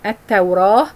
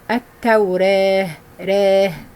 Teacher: We have to read the last alif either with an opening sound like hafs, or minor or major deflection, يعني inclination of the alif, which we call it imala, al-imala. Deflection of particular vowels from the fatha towards the kasra, or from the alif towards the ya sound. · The other way, taqleel or minor deflection, yani inclination towards, yani very close to the alif but towards the kasra